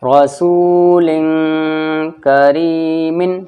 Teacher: اخفا، ناک میں تھوڑی دیر آواز چھپے گی